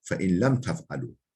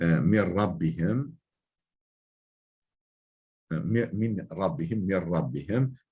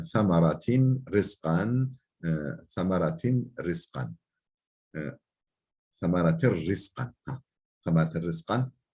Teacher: Yani nun lamda idgam oluyor ama gunne yok. Yani genizden gelen ses yok. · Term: İdgam bila gunna